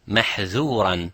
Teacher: So dhal has infitah, which means you do not use both sides of the tongue, you use only the tip of the tongue.